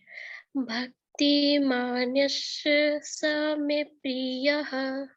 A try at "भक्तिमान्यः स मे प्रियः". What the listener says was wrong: हाँ ये देखिए आप बड़ा कर रहे हो, इसको ऐसे नहीं पढ़ना है, इसको ऐसे पढ़ना है। भक्तिमान्यः स मे प्रियः। भक्तिमान्यः स मे प्रियः। हाँ देखिए आपका स मे प्रियः तो ठीक है, बट भक्ति मान्यस मान्यस मान्यस हाँ मान्यस, हाँ